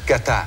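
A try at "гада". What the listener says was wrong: The T is more like a D. Gada. No, Gada.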